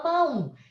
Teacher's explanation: A gente tira metade da força dessa segunda vogal e transforma essa segunda vogal em uma semivogal.